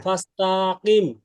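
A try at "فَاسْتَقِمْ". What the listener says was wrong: হ্যাঁ, ফার্স্ট তা, তা আরো তাড়াতাড়ি, তা হরকতের উচ্চারণ তাড়াতাড়ি পড়তে হয়।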